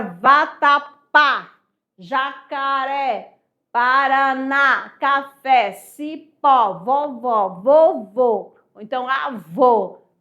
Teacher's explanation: Ó, a sílaba tônica é a última.